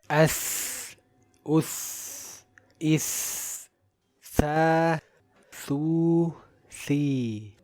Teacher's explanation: As for the Tha, it has both hums and rakhawah, so breath and sound flow easily and it is a light letter.